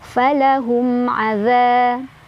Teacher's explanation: Ada izhar syafawi karena ada mim sukun ketemu sama ain. Dibacanya mim sukunnya jelas.